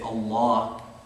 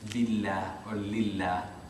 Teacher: Lam is only heavy fi lafz al-jalala, right? Fi lafz al-jalala, unless it's preceded by a kasra. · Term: thick versus thin